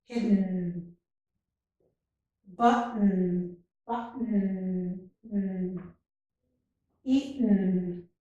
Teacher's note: So I'm pronouncing the N without the vowel sound. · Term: syllabic N